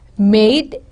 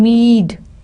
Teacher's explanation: it converted into E, a long upper front vowel